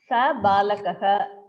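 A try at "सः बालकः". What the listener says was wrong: Saha Balakaha, not sa.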